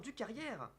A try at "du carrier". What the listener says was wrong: du carrier, du carrier, on prononce pas le R à la fin.